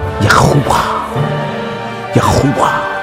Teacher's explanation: The fourth letter of the name is Hey. The Hey is virtually silent when it comes at the end of a word. Again, sounding like a short breath, barely heard. Exhale. So it takes the sound of a vowel, and hence the final syllable.